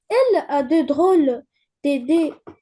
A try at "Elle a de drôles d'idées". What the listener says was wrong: Fais la liaison, s'il te plaît. Elle a de drôles d'idées, ta mère.